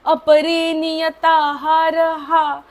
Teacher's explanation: आता जो विसर्ग आहे त्याचा उच्चार अर्धा करायचा कारण पुढे प आहे